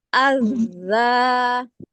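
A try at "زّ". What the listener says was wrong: Jangan ditekan. Az. Tetap ada suara itu tuh, getaran itu. Az. Az. Nggak terlalu banyak ngambilnya. Az. Dari ujung lidahnya aja. Az. Lagi kayak ada suaranya ke sedikit dikeluarin ke bagian area gigi atas. Gitu kan suara. Za, azza. Terlalu tekan. Az.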